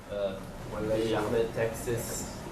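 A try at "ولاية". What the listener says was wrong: So we want to hear wilayat, Texas. So we want to hear that t in there. Wilayat, Texas.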